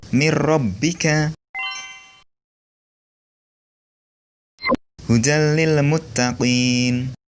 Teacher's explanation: Yang kedua, idgham bila gunnah, yaitu memasukkan atau meleburkan nun mati dan tanwin tanpa disertai dengan dengung. Huruf idgham bila gunnah ada 2, yaitu Ro dan lam. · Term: idgam bilagunnah